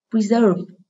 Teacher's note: Từ này là động từ có 2 âm tiết, trọng âm rơi âm tiết số 2.